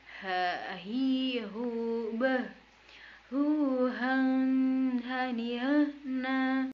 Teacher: h ini dikeluarkan melalui rongga yang paling terjauh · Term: huruf h